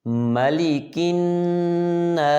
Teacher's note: میم کو جب ادا کریں گے تو دونوں ہونٹ آپس میں ملائیں گے